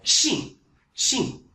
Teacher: So for this 信, you make it into SHEEN, fourth tone.